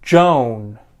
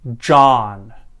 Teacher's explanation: the first word on the left that i'll say is made with the o sound and the second word that i say is pronounced with the ah sound like in father